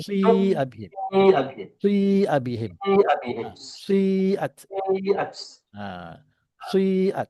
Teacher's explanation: bacaannya ialah bacaan baris kasrah. Tapi bunyi macam dhammah. Tapi dia bukan dhammah. Dan yang dominannya ialah kasrah. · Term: Ismam